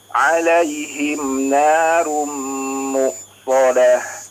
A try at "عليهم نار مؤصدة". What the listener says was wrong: Baik, iya Masya Allah ya, sudah cukup baik.